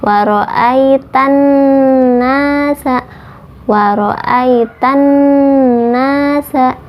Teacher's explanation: waro'aitan itu ada alif lam samsiah atau alif lamnya tidak dapat dibaca, langsung masuk kepada huruf nun